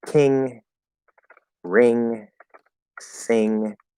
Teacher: This N goes in the back, where you would do a K or G. You close here, let it go through the nose. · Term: back N